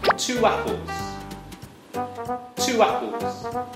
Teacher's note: When we link a word with a round lips shape, we tend to use the W sound to link these two words together.